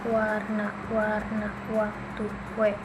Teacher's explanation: Selanjutnya W, bentuk bibirnya itu bibirnya membulat dan sedikit terbuka, udara keluar dengan suara semi vokal